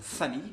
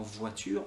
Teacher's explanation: Alors le son F, comme famille, tu vois qu'en fait on n'a pas besoin de ces cordes vocales, on fait juste sortir de l'air. Pour le son V, comme dans voiture, on a besoin de nos cordes vocales.